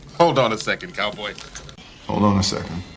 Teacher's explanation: Observas que hold termina con una consonante y on empieza con una vocal. Nuevamente cumple con nuestra regla y fácilmente los podemos unir.